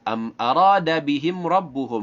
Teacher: mim sukun berarti mim tidak boleh dibaca dengung. Rasyada, nah shinnya ada tafashi, dalnya mad aiwad 2 harakat.